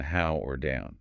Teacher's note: Jaw drops open for the a start. Then simultaneously the jaw starts closing while the lips round into that relaxed ooh shape · Okay, this one starts in the exact same low, relaxed ah place as the I diphthong just did, but its destination is different. It ends in the high schwa position, the U sound from book.